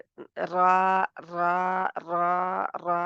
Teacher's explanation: रा की आवाज़ का इन्हिराफ ज़ुबान की नोक के दोनों किनारों से दरमियान की तरफ होगा। क्योंकि ज़ाहिर है ज़ुबान आवाज़ को जिधर रास्ता मिला उसने उधर जाना है।